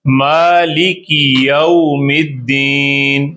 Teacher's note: میم پہ کھڑا زبر ہے اس لیے میم کو بڑا کریں, لام اور کاف چھوٹا کریں.